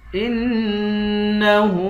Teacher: حمزے کو نون سے ملا کر نون پر غنہ کریں گے. ہاں پر الٹا پیش ہے، اس کو ایک الف کی مقدار کھینچ کر پڑھیں گے.